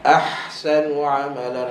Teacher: angin nak menunjukkan bahawa yang dominan pada hal pedas adalah angin suara pun kena ada juga tapi sikit je macam 80% angin 20% suara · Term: ha pedas